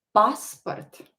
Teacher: Here the stress is on a so emphasize it. Pronounce it a little bit longer. Passport. put a stress on it.